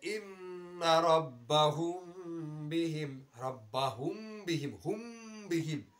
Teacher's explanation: ইখফায়ে শফুই মিম সাকিনের পরে যদি বা আসে তাহলে গুন্না কে সাথ ইখফা হোগা, গুন্নার সহিত মিম সাকিনটাকে পড়তে হবে